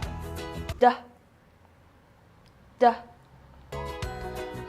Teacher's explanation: The D sound is a voice alular possive consonant produced by touching the tongue to the upper gum, holding the air for a moment and then releasing it quickly while vibrating the vocal cords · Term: dah sound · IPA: /d/